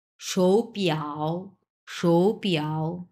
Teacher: সো তাহলে এই শৌটা তখন 2 নাম্বার টোন আমরা উচ্চারণ করব